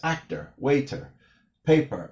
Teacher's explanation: New Yorkers often don't pronounce the 'r' in words that end in an 'r' letter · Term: New York accent